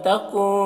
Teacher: تکن کہ نون میں اخفا ہو رہا ہے، نون کے آواز کو ناک میں چھپا کر پڑھیں گے۔